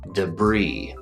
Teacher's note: We have two syllables, the first one being duh.